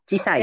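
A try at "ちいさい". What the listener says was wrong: Cek, cisai betul cisai. I-nya cisai. Jadi c-nya panjang ya cisai.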